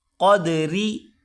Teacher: قاف کو موٹا کریں گے، اور آگے را، را کو باریک کر کے پڑھیں گے